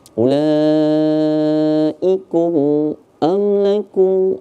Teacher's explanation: Kalau mim mati bertemu dengan selain dengan mim dan ba, maka dibaca izhar syafawi. Dibaca jelas saja.